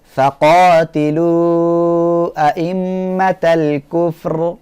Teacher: প্রিয় শিক্ষার্থী বন্ধুরা এখানে ওয়াও সাকিন ডাইনে পেশ তারপরের অক্ষর হামজা এই হামজাটা পৃথক শব্দ হওয়ায় এটা হবে মদ্দে মুনফাসিল এখানে তিন আলিফ করিয়া টেনে পড়তে হবে